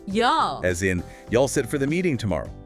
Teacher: a fascinating regional variation um in the southern US where you all reduces to y'all